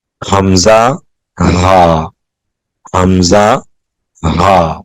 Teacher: اقصی حلق سے حمزہ ہا ادا ہوتا ہے · حلق کا وہ حصہ جو سینے کے ساتھ ملا ہوا ہے، اس سے 2 حروف ادا ہوتے ہیں، حمزہ اور ہا